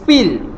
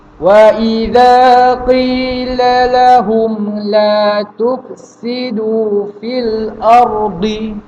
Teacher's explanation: Jadi tuan-tuan puan-puan boleh nampak fi di situ pendek. Kenapa? Sebab bertemu dengan huruf yang bertanda mati.